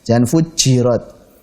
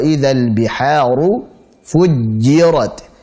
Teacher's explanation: Jim ketika bertasydid di sini hati-hati. Jangan sampai kita berikan hams karena jim tidak punya sifat hams.